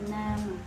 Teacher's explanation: keluarnya huruf dari bagian gusi dan bagian depan lidah.